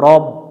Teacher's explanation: র অক্ষর মোটা করে পড়তে হবে এটা জবরে আকার পড়া যাবে না রাব পড়া যাবে না র মিলবে বা এর সাথে রব রও